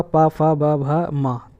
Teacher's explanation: दोनों ओठों के स्पर्श से बोले जाने वाला वर्ण ओष्ठ वर्ण कहलाता है।